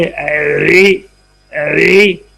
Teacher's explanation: دانت کم کھلیں گے، ہونٹ تھوڑے سے کم ہو جائیں گے، آواز نیچے کی طرف مائل ہو جائے گی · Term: زیر